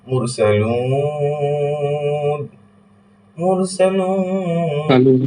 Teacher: এখানে তিন আলিফ হবে কারণ পেশের বাম পাশে জজমওয়ালা ওয়াও আছে এবং তারপরেই আমরা অক্ষ করছি, সুতরাং মাদ্দের হরফ এবং মাদ্দের হারাকাতের বামেই ঠিক বামের অক্ষরটাতে আমরা অক্ষ করছি, তাই এক আলিফটা হয়ে যাবে তিন আলিফ, আর একেই আমরা বলবো মাদ্দে আরজি